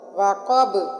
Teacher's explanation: وقب میں قاف موٹا ہے اور با وقف کی صورت میں ساکن ہو گئی، اور ساکن ہونے کی وجہ سے وقب پر قلقلہ ہوگا